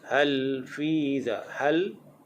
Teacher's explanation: hujung lidah kita tekan pada langit-langit. Hal fi dha berdekatan dengan gusi gigi atas. Hal fi dha, fi dha itu adalah mad asli.